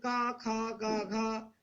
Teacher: तो 1 2 3 4 अक्षर जो हैं गौण, इनको बोलने में वायु केवल मुख से निकलता है बाहर।